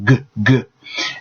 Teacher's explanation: It's hard to say, so it sounds like bags. So G makes the throat vibrate. If you put your finger on your throat, you'll feel G, G.